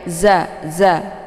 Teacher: walaupun ini dialirkan ya Zai dibaca pendek ya Za Za ini huruf Za ini sifatnya safir jadi anginnya itu lebih jelas dan ditekan sedikit